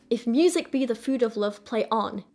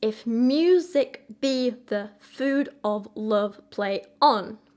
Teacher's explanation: So the stress there is on the mu, be, food, love, on. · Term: iambic pentameter